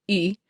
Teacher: I know that the tongue is still high, but it's back further in my mouth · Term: pulled back